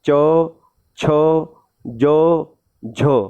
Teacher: अब आप ये बोलोगे ना तो आपकी जीभ तालु पे टकराती है, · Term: तालव्य अक्षर